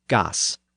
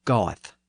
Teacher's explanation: with the northern vowel sound and the northern s verb ending he says GS whereas a southerner would have said goth so